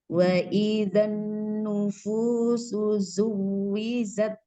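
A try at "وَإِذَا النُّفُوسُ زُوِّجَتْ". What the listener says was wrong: jangan idan idan gitu ya, Om. Fathahnya dijelaskan.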